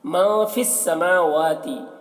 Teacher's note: मीम और वाव दोनों में खड़ा ज़बर है, दोनों को एक अलिफ के बराबर खींच कर पढ़ेंगे